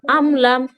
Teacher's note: এখানেও মিম সাকিনের পর হচ্ছে মিম বা বা ছাড়া অন্য কোনো অক্ষর তা এসেছে, তাই এখানে মিমকে বিনা গুণনায় জাহির করে পড়তে হবে